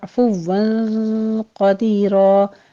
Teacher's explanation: عین وسط حلق سے ادا کرتے ہوئے واو کے پر تشدید ہے